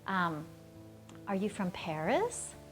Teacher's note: Anytime that you ask a yes-no question, you're normally going to ask it with this upward intonation.